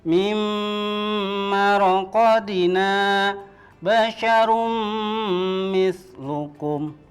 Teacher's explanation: Nun sukun atau tanwin bertemu dengan huruf mim, maka bunyinya adalah melebur dan mendengung. Jadi bunyinya bukan lagi min, huruf n-nya hilang tapi langsung ke huruf mim.